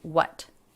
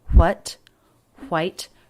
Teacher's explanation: it's much more common these days to just do a clean w sound what not the w sound with the little escape of air h before